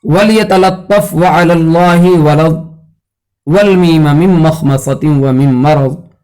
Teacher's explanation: اس لام کو سلیس اور سہل اور جو ہے اچھی طرح سے ادا کرنا چاہیے کہ اس کی ترقیق جو ہے متاثر نہ ہو۔